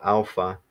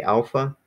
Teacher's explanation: you're gonna put emphasis on that first syllable